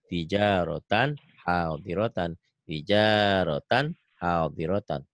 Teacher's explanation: Kalau seperti ini enggak boleh ada jeda ya, harus nyambung.